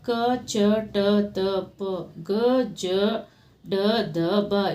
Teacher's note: ಕಡಿಮೆ ಉಸಿರಿನಿಂದ ಉಚ್ಚರಿಸುವ ವ್ಯಜನಗಳು ಅಲ್ಪಪ್ರಾಣ